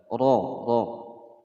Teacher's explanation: Wala taqraba, ra di sini ada ra berharokat fathah ya. Ra berharokat fathah dibaca tafkhim atau tebal.